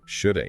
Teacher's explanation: It's a prime example of how those uh unstressed auxiliary verbs tend to get reduced in natural spoken English.